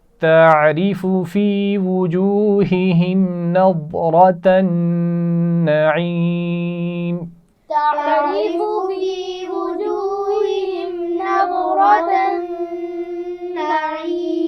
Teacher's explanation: تعریف عین کے مخرج کا خیال رکھنا ہے اور را باریک پڑی جائے گی. وجوہہم 2 دفعہ ہا آ رہی ہے تو اس کا خیال رکھنا ہے.